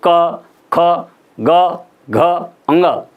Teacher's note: तो यहाँ पर कोमल तालु, हिंदी में कोमल तालु और संस्कृत में कंठ से इनका उच्चारण होता है।